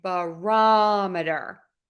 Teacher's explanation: we are going to stress the ROM in barometer